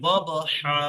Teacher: বা সাকিন কলকলা করে পড়তে হবে।